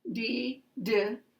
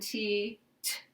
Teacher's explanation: d and t are really the same sound, except that the D is voiced using the voice and the T is voiceless